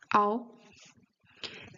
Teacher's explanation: It's always an O, but it starts closed and ends open.